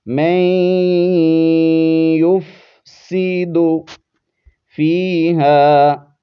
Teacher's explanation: پر غنہ بھی کریں گے، آواز کو ناک میں چھپائیں گے، نون ساکن، اس کو ہم نے نہیں پڑھنا، ادغام یرملون والا قاعدہ ہے یہاں پر